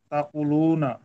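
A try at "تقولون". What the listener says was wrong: কুতেও টান হবে, লুতেও টান হবে।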